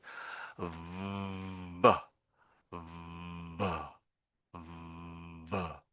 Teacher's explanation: And when I want to end the sound, I sort of flick my lower lip away from my upper teeth, and that's when you get that sudden burst of sound. So if I make it a long sort of V, and then you'll hear a burst, that's me moving my lower lip away from my upper teeth at a certain point. · the sudden burst, that's the time, that's a moment when my lower lip is leaving my upper teeth